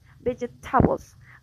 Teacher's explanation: For example, in the word vegetables, the stress is on the first syllable, but the student says vegetables, like the stress is in the third syllable, like in Spanish